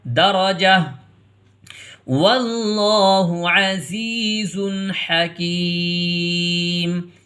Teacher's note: گول تا کو ہا سے بدل کے پڑھیں گے اور جیم کو پھر ہا میں ملا کے پڑھیں گے کیونکہ آیت لگانی ہے۔